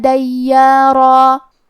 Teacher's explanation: یا پہ تشدید ہے تو ہم تشدید ظاہر کریں گے، اور یا کو اور مد الف کو دونوں کو ہلکی آواز میں پڑھیں گے، لیکن را کو اور مد الف کو یہ دونوں حرف کو بھاری آواز میں پڑھیں گے.